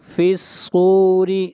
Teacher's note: صاد کو موٹا پڑھیں گے، صاد حروف استعلاء میں سے ہے